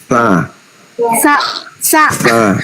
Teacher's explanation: Ujung lidah dengan berada di tengah-tengah ujung gigi bawah dan atas.